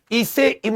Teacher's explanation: ई से इमली जो होता है यह हिंदी की अग्र जीभ के अगले भाग से इसमें होठ गोल भी नहीं होते और ये साथी संवृत स्वर है